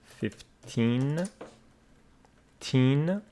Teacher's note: pronounced 15 with the stress on the second syllable